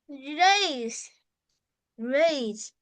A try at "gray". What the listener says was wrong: Grace? With S? Like this? No, without S, you say gray. Gray. Without S, not grace. It gray.